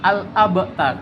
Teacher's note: Nah, baja datoko ini ketika dibaca dengan vokal ba itu biasa saja, tidak ada yang mirip. Tapi ketika kita bacanya disukunkan itu harus memantul. Misalkan al-abtar, bukan al-abtar. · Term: Qalqalah, huruf qalqalah